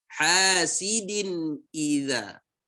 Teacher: Izhar itu dibaca dengan jelas. Maksudnya jelas itu gimana? Ya, tidak ada dengung padanya.